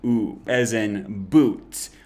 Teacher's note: be careful not to pronounce this as u as in cute or unique it's just a flat straight ooh sound